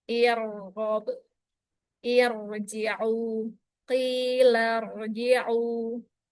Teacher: Kalau ro didahului dengan hamzah wasl maka tebal. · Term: Ro Tebal